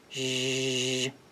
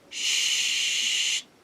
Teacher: Remember, they will be voiced when the vocal folds vibrate, as in the first sound in joy, zh, and voiceless when they don't, as in the first sound in shave, sh